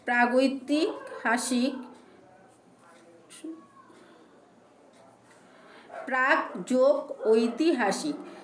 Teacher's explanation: ক ধ্বনিটি ঘোষীভবনের ফলে বর্গের তৃতীয় ধ্বনি গ এর রূপ নিয়েছে। এখানে ক আর ওই এই দুটো মিলেছে, মিলে এর উচ্চারণটা গ হয়েছে, দেখে নাও।